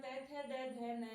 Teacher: त थ द ध न जो है वो दंते वर्ण है दांत से बोले जाने वाले वर्ण है